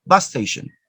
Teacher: just one s sound is pronounced in a short length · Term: gemination